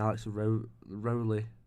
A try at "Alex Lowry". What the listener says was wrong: Lowry. Lowry. Lowry. What letter do you think his name starts with? It's L. It's Lowry. R-Y. Lowry.